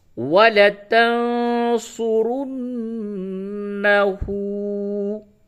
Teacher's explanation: وَلَتَنْسُ، را نون پیش رن، نون زبر نا، ہا الٹا پیش ہو، الٹا پیش کو تھوڑا کھینچ کر کے پڑھتے ہیں